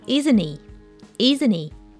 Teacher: the H sound in he also gets dropped which happens all the time with this type of Tag questions